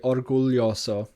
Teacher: You pronounce the L, which you don't in Spanish, and you don't in Galician either.